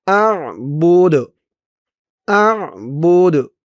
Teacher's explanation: এখানে অক্ফ করার কারণে এই যে দালের উপরে পেশটা সাকিন হয়ে গেছে, দালের উপরে পেশটা যখন সাকিন হয়ে গেছে তখন এই বা দিয়ে বার পেশ দিয়ে এই দালকে ধরেছে, এই দালটা কলকলার হরফ হয়েছে, ধাক্কা দিয়ে পড়তে হবে।